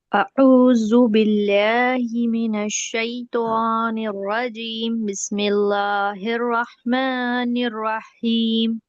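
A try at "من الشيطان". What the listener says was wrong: توا ہو رہا ہے. من الشیطان ہلکا سا گول کریں گے ہوٹوں کو. آپ بہت زیادہ ہی ایسا لگ رہا ہے توا پڑھ رہی ہیں آپ.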